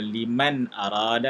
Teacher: nun mati bertemu alif ataupun hamzah, kena baca dengan izhar